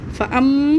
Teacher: मीम मुशद्दद को जमाओं के साथ गुन्ने के साथ पढ़ते हैं